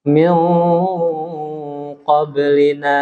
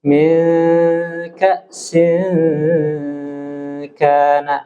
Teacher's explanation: Apabila bertemu qaf, dia bertemu ang tapi tebal. Min qablina. Tapi kalau min ka'sin kana, ini tarkik.